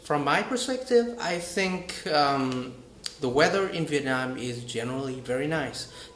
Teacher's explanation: when I have not finished speaking, my voice will rise, and then falls by the end of my speech